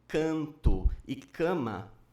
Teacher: Casos como canto e cama estão fora desse envelope, já que, nessas palavras, o A é tônico e é sempre nasalizado